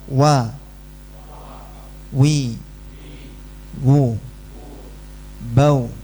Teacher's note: Huruf wau ini satu-satunya huruf yang mecucu ya. · kalau wau dalam kondisi harakatnya apapun dia selalu mencucu. Mencucu dulu baru ucapkan wa wa wi wi wu wu bau bau. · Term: huruf waw